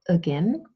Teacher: central vowel sound that occurs a lot in English and in German and it has its own name it's called a schwa and